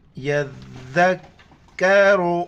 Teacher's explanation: ربنا وما یذکر، یا کو ذال کے ساتھ ملائیں گے اور ذال کے وقت زبان باہر نکالنا ہے ، ذال کو کاف کے ساتھ، را کو موٹا پڑھنا ہے،